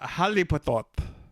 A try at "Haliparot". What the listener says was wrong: No, it's an R-O-T. Not T-O-T. R-O-T. Haliparot. Parrot.